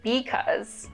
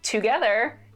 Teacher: Feature of Chicano English is that there's less vowel reduction.